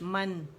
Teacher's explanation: میم کو زبر کے ساتھ ادا کر کے نون پہ جانا ہے کھلے منہ کے ساتھ